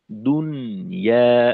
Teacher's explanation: নুনটাকে নুন সাকিনটাকে স্পষ্ট করে পড়া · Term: ইজহারে মুতলাক